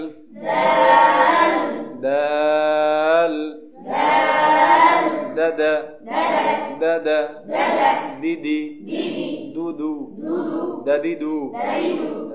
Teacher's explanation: দাল জিহ্বার আগা উপরের দাঁতের আগার সাথে লাগিয়ে উচ্চারণ হবে